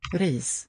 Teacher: Beginning with syllable, like in ris, it's that trill sound with the tip of the tongue.